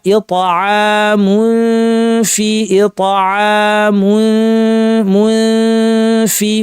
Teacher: এখানে তানবির পর ফা ইতাআমুন ফি ইতাআমুন ফি মু বলার সময় ঠোঁট গোল, যখন তানবিনে চলে আসলাম তখন দাঁত ঠোঁটের উপর ফায়ের মাখরাজে নিয়ে আসলাম, নাক থেকে গুন্না। ইতাআমুন ফি এটা আয়না দেখে ঠিক করবেন। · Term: ফায়ের ইখফা